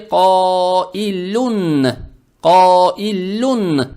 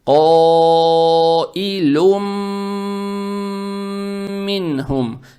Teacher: звук Н в танвине превращается в букву Мим, за счет чего буква Мим удваивается, и ее, то есть букву Мим, надо произносить удерживая. Это идгам с гунной.